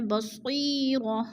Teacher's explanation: یا ساکن سے پہلے صاد کے نیچے زیر ہے تو یا مدہ کو ایک الف دو حرکات کے برابر ہم نے کھینچ کر پڑھنا ہے